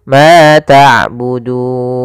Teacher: Mad yang muncul karena wakaf dan disebabkan karena adanya sebelum huruf yang diwakafkan dan disukunkan ada huruf mad, yaitu berupa huruf waw. Maka panjangnya du di sini boleh 2 harokat, boleh 4 harokat, boleh 6 harokat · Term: mad arid disukun